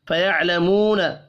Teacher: واو مدہ ہے, ایک الف کے برابر کھینچ کر پڑھیں گے